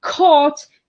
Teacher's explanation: k in caught is back, a gesture which involves pulling the root of the tongue back towards the pharynx. This is because it is followed by a vowel articulated in the same way.